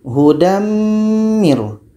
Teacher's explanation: tanwin masuk kepada bunyi mim Huda Miro dan dibaca secara dengung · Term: Idgham Bighunnah